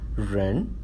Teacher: ren is a rising tone